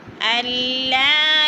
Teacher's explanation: نون ساکن کو نہیں پڑھیں گے، حمزہ کو لام کے ساتھ ملا کر پڑھیں گے، ادغام کریں گے